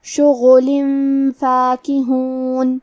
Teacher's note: غین کے ادائیگی حلق کے اوپر والے حصے سے ہے، غین حروف التفخیم میں سے ہے تو ہم یہ حرف کو بھاری آواز میں پڑھیں گے. آخری میں لام کے نیچے تنوین زیر ہے.